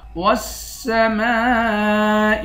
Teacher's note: میم کے بعد الف ہے، الف بھی حروف مدہ ہے اور اس پر مد ہے، اس مد کو 5 الف کی مقدار کھینچ کر پڑھتے ہیں